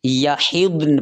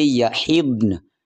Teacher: وقف کی صورت میں کلمے کے آخری حرف پر جو زبر ہے ہم اس کو ساکن کر دیں گے، اور اس کو پھر ہم یحضن پڑھیں گے۔